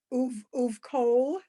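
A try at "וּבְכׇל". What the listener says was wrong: Better to say, There's no dots, so it's better to say uv chol.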